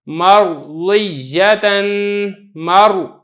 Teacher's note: پانچویں صورت یہ ہے کہ را ساکن ہو اور اس سے جو پہلے والا حرف ہے اس کے اوپر زبر ہو تو تب بھی را کو آپ نے پر کر کے پڑھنا ہے، جیسا کہ مثال دیکھیں را ساکن ہے، اس سے پہلے میم پر زبر ہے تو آپ را کو پر کر کے پڑھیں گے